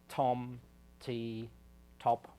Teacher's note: In the case of T that I mentioned before, I had a released T, that's a T with a closure, a build-up of pressure behind the tongue, and then a release and a burst of air in something like tom, T, top.